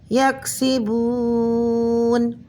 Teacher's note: واو مدہ کے بعد والا حرف وقف کی وجہ سے ساکن ہو رہا ہے تو یہاں اس واو مدہ کو اس کلمے میں 3 الف کے برابر کھینچ کر پڑھیں گے